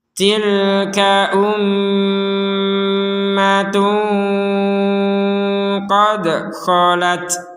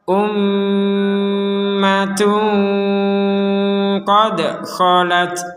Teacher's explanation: Ada mim bertasydid di sini, maka kita harus mendengungnya. Itu di rongga hidung kita berdengung.